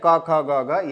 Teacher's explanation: जो कवर्ग होता है उसका उच्चारण स्थान कंठ से होता है